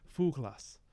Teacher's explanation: So fuglas, this G is actually a fricative.